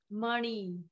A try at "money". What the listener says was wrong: It's not ni, it's ani.